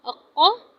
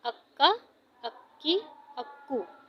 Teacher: हमज़ा ज़बर क़ाफ़ अक़, क़ाफ़ ज़बर क़ा, अक़्क़ा। मोटे काफ को हलक के आखिरी हिस्से तक लेके जाते हैं, यानी कि जहाँ पर ज़बान की जड़ है वहाँ तक। हमज़ा ज़बर क़ाफ़ अक़, क़ा ज़बर क़ा, अक़्क़ा।